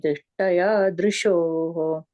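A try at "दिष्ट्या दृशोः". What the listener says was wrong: So Dishtya Drishoho. And you're saying Dishtaya, you're saying the ta doesn't come. Dishtya Drishoho.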